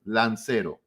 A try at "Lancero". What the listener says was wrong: A little better. See, it sounded like you're saying about your lawn. LO. No.